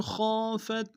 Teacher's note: خا کو موٹا ادا کریں گے، خا کے سالف مدہ ایک مقدار میں کھینچیں گے